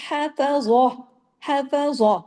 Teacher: ہا باریک، فا باریک، ضا جو ہے وہ ہیوی کیونکہ وہ 7 موٹے حروف میں سے ہے